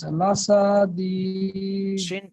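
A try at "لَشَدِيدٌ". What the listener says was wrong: শিনটা টান হয়ে যাচ্ছে, লাসাদিদ।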